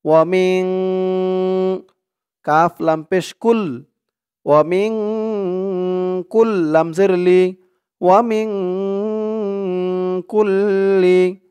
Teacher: ওয়াও জবর ওয়া, মিম দিয়ে নুন ধরবে, মিম নুন জের মিং, ইকফা গুন্নাহ, নুন সাকিনের পরে ইকফার হরফ কাফ আসছে।